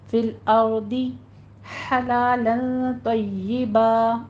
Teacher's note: فی الارض میں را مفخم پڑھی جائے گی، اس کو ساکن کرنا ہے اور پر پڑھنا ہے